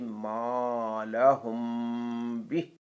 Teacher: میم ساکن کے بعد اگر با متحرک آ جائے تو وہاں اخفا مع غنہ کر کے پڑھیں گے. جیسے ما لہم بہ.